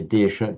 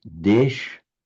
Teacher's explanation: In the languages of modern northern India, you lose the final a, so you don't say desha, just desh.